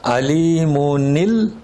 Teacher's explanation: نون کا لام میں ادغام ہوتا ہے